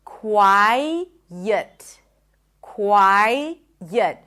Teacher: When you transition from here to here, what happens is that you hear an intrusive sound. The transition of the tongue from the I, the front vowel, to the neutral vowel, the schwa, ut, gets the tongue to pronounce a y sound.